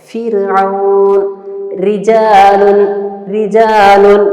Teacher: را کو ہم نے ترقیق کے ساتھ یعنی ہلکا کر کے پڑھے ہیں، را کو باریک کر کے